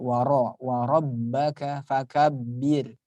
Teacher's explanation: Nah, birnya ini baru dibaca tarkik tipis ya, karena kasrah.